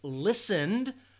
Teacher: that final sound is a voice sound, that you can hear that, feel that vibration in the throat